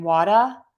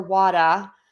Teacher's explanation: Some people say water with an R and some say it with no R. Correct. You do hear variations of people saying water with a more unrelaxed R or wada.